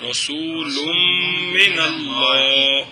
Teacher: نون تنوین کے بعد میم ہے تو نون تنوین کو میم کریں گے، پھر میم کا میم میں ادغام کریں گے غنے کے ساتھ